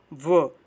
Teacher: उसमें ऊपर का दांत यूज हो रहा होगा और निचला ओठ यूज हो रहा होगा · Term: दंतोष्ठ